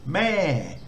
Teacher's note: this one's got a falling tone so you know you put energy into the front of the word then it drops off